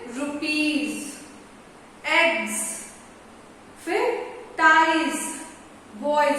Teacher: अब हम लोग पढ़ते हैं क्या क्या, जैसे ब्राइड्स है ना, फिर डॉग्स, फिर केज, फिर पोटैटोज। यहां हम लोग एस यूज करते हैं, लेकिन साउंड हिंदी में हम लोग क्या लिखते हैं, ज